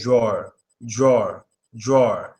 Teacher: you could completely ignore the W because when you make that deep a sound we know there's a w after it so all you have to say is drawer drawer drawer that's